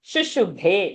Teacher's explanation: shushu both are Rasva sounds, bhe mahaprana long sound